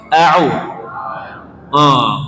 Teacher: huruf Ain itu letaknya di tengah tenggorokan makhrajnya tempat keluar pabriknya itu di tengah tenggorokan maka ketika huruf